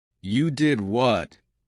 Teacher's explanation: Rising intonation to show surprise